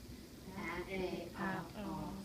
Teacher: It has these 4 sounds. The difference between the third and the fourth sound, ah and ah, your lips are tightening a little bit with that fourth sound.